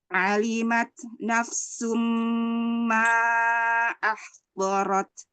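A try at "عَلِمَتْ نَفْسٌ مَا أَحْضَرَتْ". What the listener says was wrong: Ain fathah perbaiki. Keluarnya A, jangan terlalu tebal.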